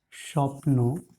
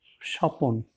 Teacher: যখন আমরা স্বপ্নকে স্বপন বলি তখন কিন্তু মাঝখানে একটি স্বরধ্বনির উচ্চারণ আসে। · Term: মধ্য স্বরাগম